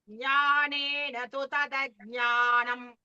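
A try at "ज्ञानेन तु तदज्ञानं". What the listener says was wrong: You see, the second Jna came very clearly. First Jna, okay, you have to put the same way.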